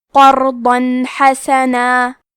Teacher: ہم یہاں تنوین ظاہر کریں گے اور اسے نون ساکن پڑھیں گے اور بغیر غنہ سے یہ حکم کو ادا کریں گے · حا کی ادائیگی حلق کے درمیان والے حصے سے ہے کیونکہ اس پہ زبر ہے اور سین پہ بھی زبر ہے تو ہم یہ دونوں زبر کو ظاہر کریں گے.